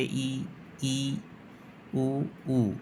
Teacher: समृत विवृत और अर्ध विवृत अब यह क्या होता है समृत वे स्वर जिनके उच्चारण में मुंह बहुत कम खुलेगा · समृत वे स्वर जिनके उच्चारण में मुंह बहुत कम खुलेगा, बहुत ही कम खुलेगा, उसे समृत कहेंगे। जैसे ई, ऊ, इसमें मुख बहुत कम खोलना पड़ता है, इसलिए यह समृत है। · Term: संवृत